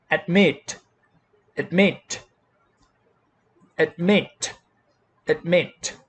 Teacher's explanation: the second syllable stressed